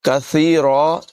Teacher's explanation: ثا جو ہے اس میں سیٹی کی آواز ہرگز پیدا نہیں ہونے دیں گے